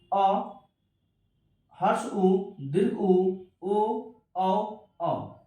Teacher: वैसा स्वर्ण वर्ण जो जीभ के सबसे पिछले हिस्से से बोला जाता है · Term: पार्श्व भाग